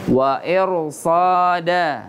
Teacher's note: Ra dilalui dengan huruf yang berharakat kasrah namun setelah huruf ra sukun itu ada huruf sad. Sad itu adalah huruf isti'la, berarti harus dibaca tafkhim.